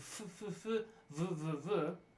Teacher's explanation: labiodental so the lip is touching the teeth